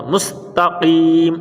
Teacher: اب سین سیٹی والا اور قاف موٹا